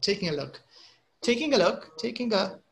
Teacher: You can't hear the sound of G here. Yeah, the N is stronger, I think.